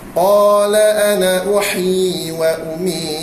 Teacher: Ha uhyi panjang dua harakat. Mad asli bukan mad tamkin.